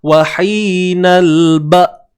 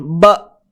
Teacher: bila kita sebut hamzah yang dalam keadaan sukun khususnya, kita dah tak dengar sebarang aliran suara. Tak ada suara yang keluar dah. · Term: suara yang tertahan